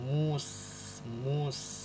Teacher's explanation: pada huruf Sin ini mengalir nafas